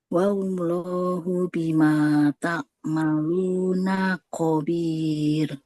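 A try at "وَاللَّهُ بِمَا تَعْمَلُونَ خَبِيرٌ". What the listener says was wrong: Wallahu bima ta'maluna khabir. Nunnya dia nggak boleh dipanjangkan.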